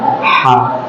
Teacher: makhraj dari huruf H ini yaitu dari bagian tenggorokan yaitu tenggorokan bagian tengah. Nah, jadi di sini kita harus melakukan suaran dari penggorokan tengah kita.